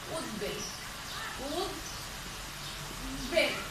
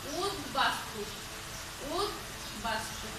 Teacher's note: উদ উপসর্গের সাথে যদি ব ফলা যুক্ত হয়, তাহলে কি হয়, এই বয়ের উচ্চারণটা বজায় থাকে। আমরা উচ্চারণ করার সময় কিন্তু উদ খণ্ড বা এভাবে বলবো উদ্বেল, অর্থাৎ এই এভাবে উচ্চারণটা এইভাবে হয়, উদ্বেল, উদ্বেল, অর্থাৎ বয়ের উচ্চারণটা বজায় থাকে।